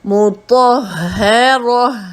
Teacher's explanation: ہاں کی آواز ہماری سانس کی نالی کے نیچے سے جو ہے زور لگاتے ہوئے